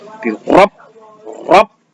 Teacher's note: Nah, ketika kita mengatakan rob itu tebal atau tipis? Jelas tebal ya, tebal gitu, dan tafkhim.